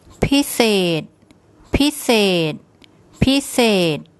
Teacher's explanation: So the tone rule for a high class initial consonant, a dead syllable and a long vowel is a low tone. So it's the first syllable is high and the second is low.